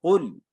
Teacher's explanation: قوف موٹا ہوگا، چھوٹا نہیں ہے، کتاب والا نہیں ہے